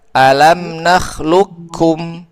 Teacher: Nah, tetapi pendapat yang paling diunggulkan oleh Imam Ibnul Jazari dalam kitab at-Tahmid adalah lafaz ini termasuk idgham kamil yang berarti semua qf masuk ke huruf kaf dengan alasan huruf qf hanya memiliki sifat istila, tidak memiliki sifat itbaq